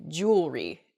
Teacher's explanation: the word kind of gets a little bit smushed together and we say jewelry instead. We miss that second E sound in there. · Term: mispronunciation